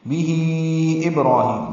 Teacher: بہی میں مد صلہ کبرا ہوگی، یہ مد منفصل 4 حرکات لمبا کریں گے · با ساکن پہ قلقلہ ہے، را پر ہے، کھڑا زبر ہے، قائم مقام مد اصلی ہے. ہی یا مدہ ہے.